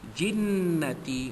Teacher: jinnati wajibul gunnah kita dengungkan pada kadar 2 harakat